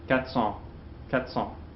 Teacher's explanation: Also with 400, most often in somewhat speedy, natural speech, if we have 4 followed by a consonant sound, I think you hear most French people won't pronounce that R